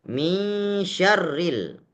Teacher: Tetapi karena nun sukun bertemu dengan sya, namun nun di sini tidak hilang secara sempurna. Tapi dia hilang 50% saja. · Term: idgham kamil